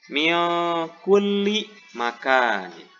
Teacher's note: Kemudian yang ketiga adalah ikhfa ab'ad, di mana cara membaca nun matinya dengan menggantikan nun mati ataupun tanwin dengan bunyi eng